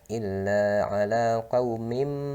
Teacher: Nah, qaumin itu tanwin bertemu bainakum di bawahnya, hukumnya iklab, dibaca illa ala qaumim. Nah, jadi bunyi mim dan dilamakan sedikit bacaannya